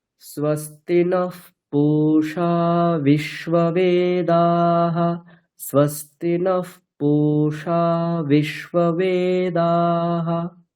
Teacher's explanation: এখানে বিশ্ববে উপরে স্বর রয়েছে, নকারের বিসর্গটা ওটাও উপরে স্বর রয়েছে